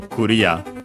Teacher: The accent is just like in English, so very clear, and so Korea, low, high, low.